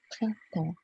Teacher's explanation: So the N, the P, and the S are not pronounced.